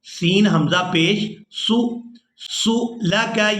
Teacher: اب یہاں پر یہ لفظ تھوڑا مشکل ہے، اس کو اس طرح سے ادا کریں گے کہ سین کو حمزہ ساکن کے ساتھ ملائیں گے تو جھٹکے کے ساتھ ادا کریں گے